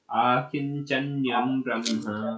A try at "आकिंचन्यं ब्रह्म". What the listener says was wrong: यहाँ आकिंचन्यम, आ बड़ा होना है, आ इसमें छपा है छोटा आ, तो उसको बड़ा पढ़ेंगे।